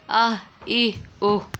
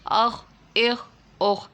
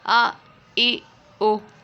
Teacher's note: ہا کو نہیں کھینچیں گے، خوا کو بھی نہیں کھینچیں گے، اور حمزہ کو بھی نہیں کھینچیں گے